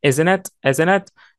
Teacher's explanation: ال T هنا drop T خدناها في الفوناتكس طبعا وبنعمل لها drop واحنا بنطقها لأنها في النيجاتيف فورم وقبليها N